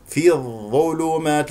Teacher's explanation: لدينا اخفاء مع الفي ومرت معنا في الظل في الظلمات لدينا اللام هنا شمسيه لانه جاء بعدها حرف الظاء